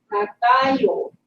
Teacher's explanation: starts from the middle, goes up and it goes down. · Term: word melody